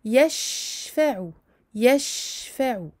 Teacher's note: ne pas oublier de donner au shin son temps de rahawa et son tafashi.